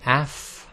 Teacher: So when you say Af, okay, there's at the end there's a f sound, a sort of more stronger release of breath, and that's normally known as the Hams.